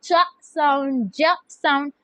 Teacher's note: These are produced by placing the tongue at the very front of the palate, which is near the alveolar ridge। alveolar ridge और दांतों के दरमियान की जो जगह है ना थोड़ी सी, उसको बोलते हैं पैलेट। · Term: पैलेटो एल्वियोलर